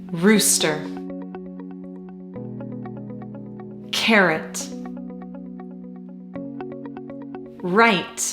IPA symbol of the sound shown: r